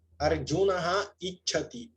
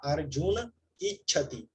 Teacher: Desapareceu a visarga. Visarga drops. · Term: Visarga cai